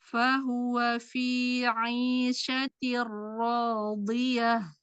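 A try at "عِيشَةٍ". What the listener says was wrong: Aisyati. Aisyati. Bukan. Aisyati. Jangan di syaknya Umi. Sempurnakan madinya. Aisyati radiyah.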